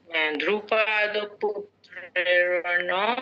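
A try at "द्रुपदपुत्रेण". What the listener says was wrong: আচ্ছা, ধ্রুপদ নয়, 1 মিনিট মহোদয়া, ধ্রুপদ নয়, ধ নয়, দ, দাঁতের দ, ধ্রুপদ বলুন।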